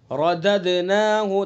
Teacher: दाल के अंदर कलकला करेंगे